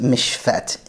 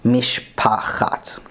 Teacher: the chet has completely disappeared, and all we are left with is an empty letter, so it's just mishfet instead of mishpachat. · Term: no chet sound